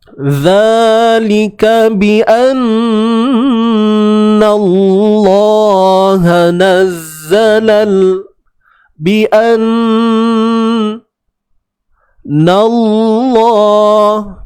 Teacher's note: nun yang bersabdu kita kena gunnah, kena dengung dengan kadar 2 harakat. Zalika bi anna Allah nazzalal bi anna Allah, kalimah Allah kena tebal.